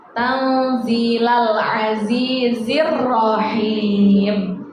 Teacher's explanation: seperti itu di situ tanzila ada nun mati ketemu huruf dza hukum bacaannya namanya ikhfa yang kita baca dengan cara samar-samar dengung dengan samar-samar jadi cara bacanya bukan tanzilal Aziz tidak kita dengungkan dengan samar-samar